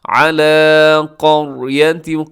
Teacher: او کالذی مر، اسے مضبوطی سے پڑھے گا، را کی پر تشدید ہے، را کی پر زبر کی وجہ سے موٹا بھی پڑھا جائے گا۔ علی قریۃ، قریہ میں را موٹی ہے، قاف بھی موٹی پڑھی جائے گی